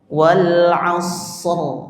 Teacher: Shadnya sudah tebal. Jadi enak itu ditebalkan ra-nya.